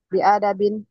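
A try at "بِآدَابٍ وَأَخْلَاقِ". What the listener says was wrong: Bi'a panjang. Bi'ada bin. Udita asluhu. Nah, ulibatul alifu liwuku'iha.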